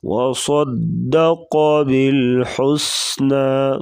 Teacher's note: صاد اور قاف موٹے حروف ہیں، ان کو موٹا کریں گے